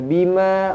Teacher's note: ma mad asli dua harokat